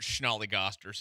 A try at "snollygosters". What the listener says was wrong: Not Schnolly-gosters. Snolly-gosters. No S-H in there. There's no Schnall. Snolly-gosters.